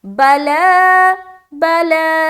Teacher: اب چلے سب سے پہلے دیکھ لیں یہاں پر بلا، با زبر با، لام کھڑا زبر لا، لام کے اوپر کھڑا زبر آ گیا۔ کھڑا زبر برابر ہوتا ہے الف مدہ کے، تو الف مدہ کی طرح کھینچ کر کھڑا زبر کو بھی پڑھیں گے